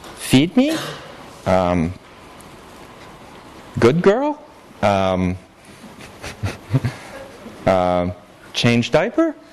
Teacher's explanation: So, as for questions, they just said whatever sentence they wanted to say, and they used rising intonation to indicate that it was a question